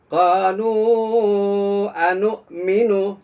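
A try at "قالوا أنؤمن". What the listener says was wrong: Nah, nunya nggak boleh panjang. Qalu anu minu.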